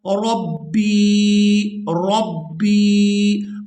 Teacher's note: रा को बा मुशद्दद के साथ मिलाएंगे और सख्ती के साथ अदा करेंगे। इसके बाद बा को या साकिन के साथ मिलाएंगे तो खींचकर अदा करेंगे।